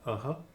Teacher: kind of nasalization of the corresponding valid and the Wasaga is a slight repetition of the vowel sound preceded by a small aspiration